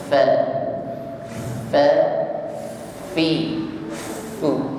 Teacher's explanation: makhraj huruf Fa adalah ujung gigi bertemu bibir bawah ya tepatnya bibir bawah bagian tengah ujung gigi pertemukan dengan bibir bawah sifat yang menyertainya adalah Hamas